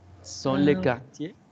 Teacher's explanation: On ne prononce pas la R. Sont les quartiers.